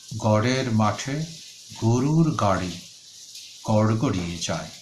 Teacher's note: শুধু গরু শব্দটির মধ্যে রয়েছে তরলজাত বশূন্য র, আর বাকি সবগুলো রয়েছে তাড়নজাত ডশূন্য র। কাজে উচ্চারণ হবে গড়ের মাঠে গরুর গাড়ি গড়গড়িয়ে যায়।